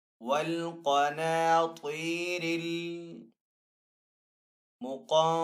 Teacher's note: त्वा भी हरूफ मुस्ताली में से तो त्वा को भी यहाँ पे पुर पढ़ेंगे। वल क़नातीरिल मुक़ंतरती, काफ हरूफ मुस्ताली में से तो काफ को पुर पढ़ेंगे। · आगे नून साकिन है, नून साकिन के बाद त्वा हरूफ इख्फा में से तो यहाँ पे इख्फा वाला गुन्ना करके पढ़ेंगे। त्वा हरूफ मुस्ताली में से तो त्वा को भी पुर पढ़ेंगे। रा हरूफ मुस्ताली में से नहीं है लेकिन रा के ऊपर जबर है तो इसलिए रा को यहाँ पे पुर पढ़ेंगे।